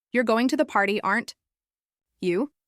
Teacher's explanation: With a falling tone if you're just checking, or "You're going to the party, aren't you?" With a rising tone if you're unsure and really asking.